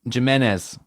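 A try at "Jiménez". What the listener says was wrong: No, J is like an H.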